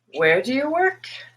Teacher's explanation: you have a wh question it just requires neutral information and you're gonna notice this big big big rise starting very low going very high when somebody wants clarification